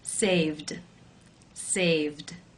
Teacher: D sound of voiced consonant for example the verb to save the final sound is the V voiced consonant sound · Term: voiced d sound